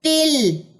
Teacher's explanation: تا کی زیر کو آپ نے لام کی جزم کے ساتھ جا کے ملا دینا ہے، حمزہ وصلی دوران کلام حذف ہو جاتا ہے، یہ پڑھا نہیں جاتا۔